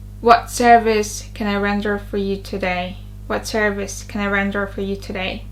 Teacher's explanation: The stressed words service and render.